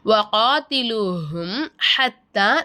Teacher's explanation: சுக்குன் செய்யப்பட்ட மீமை வெளிப்படுத்தி உச்சரிக்கணும் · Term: இல்ஹாரே சபவி